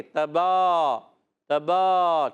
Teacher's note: یاد رکھیں تا دال تو کو، با کو دونوں ہونٹوں کے تر حصے سے، با پر کھڑا زبر ہے، اس کو ایک الف کھینچیں گے · تو یہاں پر تبارک الذی میں تا کو باریک رکھنا ہے، تا پر زبر ہے، حرکات کو کھینچنا نہیں ہوتا، با پر کھڑا زبر ہے، با کا مخرج ہے دونوں ہونٹوں کا تر حصہ